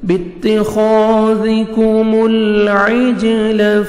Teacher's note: جیم حروف قلقلہ میں سے ہے، ڈبل ساؤنڈ آئے گا